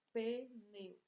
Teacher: Encontro vocálico, 2 vogais numa mesma sílaba, então ditongo.